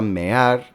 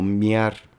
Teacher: La palabra mear, que tiene 2 sílabas, muchas veces se pronuncia como miar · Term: vocales en hiato